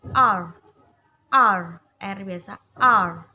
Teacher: Jadi posisikan lidah ditekuk ke atas, melengkung. Jadi lidah ditekuk ke atas, dia melengkung ya.